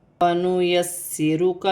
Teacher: یہاں سین مشدد ہے، سین کو سختی اور جماؤ کے ساتھ پڑھا جائے گا، 2 مرتبہ پڑھا جائے گا